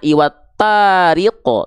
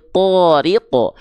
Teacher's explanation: tapi thoriqo karena huruf tho termasuk ke dalam huruf yang tebal huruf-huruf yang tebal itu ketika dia berharakat fathah dia tidak akan terdengar seperti vokal A tapi dia akan condong seperti vokal O